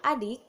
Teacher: bunyi I agak tinggi tapi tidak bulat